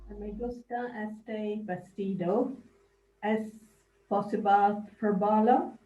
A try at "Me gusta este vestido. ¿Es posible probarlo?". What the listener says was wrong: Yeah. That's pretty good. Yeah.